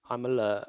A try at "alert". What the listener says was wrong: you need to say the word alert a bit more alertive. It's the monotone delivery of alert that makes people ignore it.